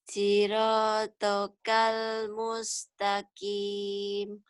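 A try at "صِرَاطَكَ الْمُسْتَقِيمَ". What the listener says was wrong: jangan lupa nutup mulutnya, ujungnya. Kalau nggak lupa nutup atau telat nutup, kedengarnya N. Kin. Kim.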